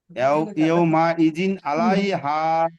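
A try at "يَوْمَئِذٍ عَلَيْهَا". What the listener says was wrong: মাশাআল্লাহ, খুব সুন্দর।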